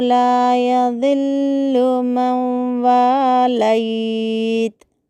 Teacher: انہو لا یذل موالیت میں نون ساکنہ کے بعد واو آنے کی وجہ سے وہاں پر ہمیں ارملون کی تختی کو پہچاننا ہے، اس لیے نون کو پڑھے بغیر واو کو ملا کر گنہ کے ساتھ پڑھنا ہے · انہو میں حمزہ کو واضح کرنا ہے، نون مشددہ کا خیال کرتے ہوئے ہا کو حرکت پڑھنے سے بچاتے ہوئے پڑھنا ہے۔